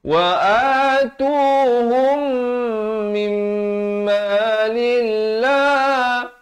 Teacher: Jalal di sini dibacakan nipis. Jangan baca tebal.